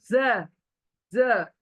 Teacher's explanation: हमारी जबान ना चौड़ी हो रही है मुंह के अंदर, और दोनों तरफ दांतों के किनारों को लग रही है, दोनों तरफ के दांतों के किनारों को लग रही है, टच कर रही है।